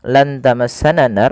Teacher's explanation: Kemudian ketika melafalkan lan tamassanan nar, pada lafal nunnya lan tamassanan nar, nunnya disamarkan kepada huruf ta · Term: ikhfa